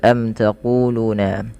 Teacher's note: mim mati bertemu dengan ta dibaca dengan jelas Suara mimnya karena dia izhar syafawi kemudian panjang ku dan Lu harus sama karena kedua-duanya Mad thaii